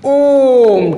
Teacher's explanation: काफी देर तक इसमें आवाज है, 3 गुना समय लग रहा है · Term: प्लुप्त स्वर